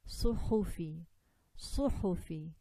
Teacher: Make sure that the air comes out with this ha. We don't eat up the air. We don't want to take this quality away from ha.